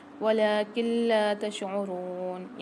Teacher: یہاں پر نون ساکن کے بعد لام مشدد آ رہی ہے تو یہاں قاعدہ ہوگا ادغام بلا غنہ کا، یہاں غنہ نہیں کریں گے، ادغام کر کے پڑھیں گے، ٹھیک ہے۔